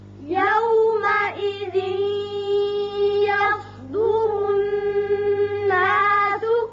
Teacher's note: تنوین کے بعد یا آ گیا جو کہ ینمو میں سے ہے, یہاں ادغام ہوگا غننے کے ساتھ